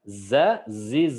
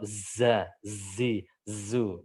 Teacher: desisan yang khas runcing dirasakan dia runcing enggak menyebar